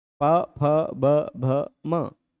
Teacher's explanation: बोलते समय दोनों ओष्ठ आपस में टच हो रहे हैं, इस कारण इनका उच्चारण स्थान हो गया ओष्ठ।